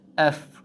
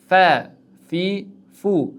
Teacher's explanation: tepa tishimiz pastki labimizga tegishligi bilan chiqadi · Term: fa harfi